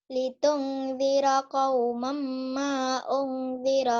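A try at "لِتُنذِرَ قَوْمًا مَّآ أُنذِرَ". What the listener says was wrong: Kurang, gunanya kurang. Jangan buru-buru sayang. Litunzira qauman ma unzira aba'uhum fahum ghafilun. Tenang ya, jangan buru-buru ya. Dinikmati gunahnya, idgham bi gunahnya ditahan satu alif ya. Bahkan lebih kalau lagu.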